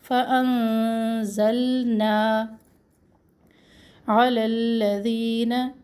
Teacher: نون کو تو ہم چھپائیں گے لیکن لام اپنے مخرج پہ زبان کی نوک ٹھہر جائے گی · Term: اخفا